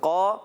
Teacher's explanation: یہاں پر قاف کے ساتھ الف بھی موٹا ہو جائے گا